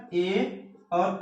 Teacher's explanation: य ठीक है म र न ये ये ये ये जो ये सब है ठीक है इनको कहां से बोला जाता है नासिका से बोला जाता है ठीक फिर उसके बाद आता है ए दंतो कंठ तालु मतलब क्या ए और ऐ ये ये कहां से बोले जाते हैं कंठ तालु से